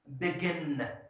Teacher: Now this last syllable is stressed.